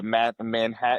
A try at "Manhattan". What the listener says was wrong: cuz I didn't hear any T's at all when you pronounce the second.